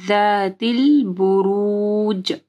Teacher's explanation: بروج جیم کے اوپر جو ہے کلکلا ہوگا · جب آپ زال پڑھیں گے تو آپ کی زبان کی نوک جو ہے اوپر کے 2 دانتوں کے پاس آئے گی۔